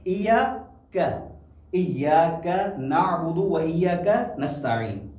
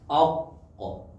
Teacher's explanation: کاف کو بالکل باریک ادا کرنا ہے اور قاف کو موٹا کر کے ادا کرنا ہے